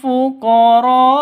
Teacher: Fuqara panjang 5 sampai 6 ketukan karena mad wajib muttasil